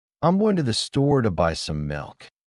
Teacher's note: The stressed words are going store, buy, and milk. The other words are softer. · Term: stressed and unstressed syllables